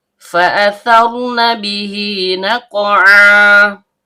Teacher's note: Fa huruf bibir yaitu perut bibir bawah bertemu dengan ujung gigi seri atas. Kemudian hamzah berbentuk alif atau hamzah qot yang keluar dari tenggorokan bagian bawah. · Karena qafnya sukun dan berada di tengah kata, maka hukum bacaannya qalqalah sugra, bunyi pantulannya kecil.